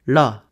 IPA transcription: ɭ